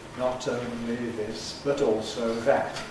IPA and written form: ˈnɒt əʊnli ˈðɪs bət ˈɔːlsəʊ ˈðæt (not only this but also that)